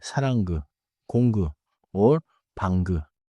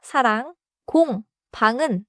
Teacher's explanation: final 이응 is a nasal ending, like 엔징, without a hard G release